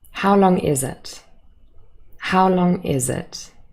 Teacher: It is a falling intonation at the end of the question.